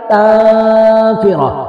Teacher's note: سین پر سیٹی کی آواز آئے گی